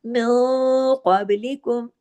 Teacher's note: خلو، من قبلکم، نون ساکن کے بعد قاف ہے، قاف کو ہیوی کرنا ہے، اور قاف کے فوراً بعد جو با ہے وہ جزم کے ساتھ ہے، اس پہ کلکلہ ہوگا، اور باقی تمام باریک حروف ہیں۔ · اب دیکھیے اخفا حقیقی قلنا کاملہ، یہاں پہ قاف کی وجہ سے آواز میں بھاری پن بھی پیدا ہوگا اور آگے کلکلہ بھی